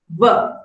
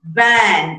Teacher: ver is the voiced labial dental fricative why is it called labiodental because you use the upper teeth